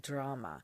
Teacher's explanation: an R sound as in the r in drama and you can roll it just a little it's not exaggerated um but give it a little bit more body than English R usually gets